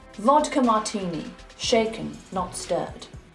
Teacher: Make that T crisp, and the R is an open R.